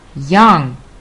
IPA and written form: jʌŋ (young)